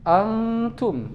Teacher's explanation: nun sukun menghadapi ta, dibaca samar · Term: ikhfa